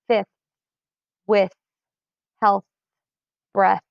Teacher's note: all words at the end have the unvoiced TH sound